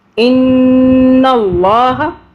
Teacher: نون کو ہم نے اور لام کو ہم نے 2 مرتبہ پڑھا، 2 مرتبہ آواز بنائی۔ نون پہ تشدید ہے اور نون کو ہم نے 2 سے 3 سیکنڈ کے لیے ہم نے ہولڈ کیا